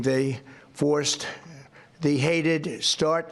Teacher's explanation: he sounds so tired. He's so breathy.